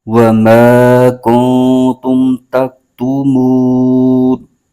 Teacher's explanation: مد عارض ہو رہا ہے، اس کو 3 الف کی مقدار لمبا کھینچ کے پڑھیں گے